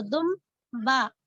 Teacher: मीम की आवाज आ रही है आपको, दुम बा, तो यहाँ नूने गुन्ना मीम में बदल गया